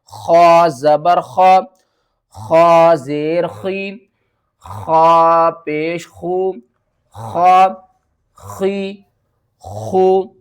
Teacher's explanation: خا زبر خا، جب آپ نے غین اور خا کو پڑھنا ہے نا تو جو حلق کا ہمارا سب سے اوپر والا حصہ ہے نا وہاں سے آواز آئے گی